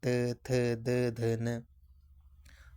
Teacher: दांतों को स्पर्श करती है जीभ की नोक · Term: दंत व्यंजन